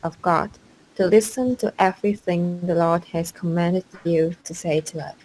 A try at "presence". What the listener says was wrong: I think there's a little bit of a B sound in your P, but not much. Presence. P. Presence.